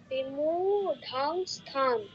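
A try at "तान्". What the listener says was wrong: স্থান নয়, দন্তস যুক্ত স্তা, বিমু ঢান স্থান।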